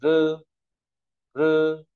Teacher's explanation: R đọc cong lưỡi này